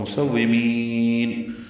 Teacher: مسومین سین کو واو سے ملائیں گے اور میم کو لمبا کر دیں گے، نون ساکن پہ اظہار ہوگا، مسومین۔